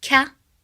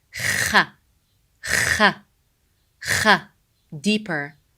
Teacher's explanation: Kha sound is pronounced from top throat. So it's the throat letter. It's not from the tongue, far tongue like ka sound. It's not ka, it's kha, kha, kha, deeper.